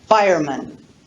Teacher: when we look at the compound word fireman we have the unstressed vowel schwa